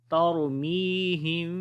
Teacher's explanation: جب میم ساکن کے بعد با آ جائے تو اخفاء شفوی ہوتا ہے، یعنی کہ میم کی آواز کو چھپا کر پڑھیں گے، اور یعنی کہ ہونٹ آپس میں مل جائیں گے اور نرمی کے ساتھ ملیں گے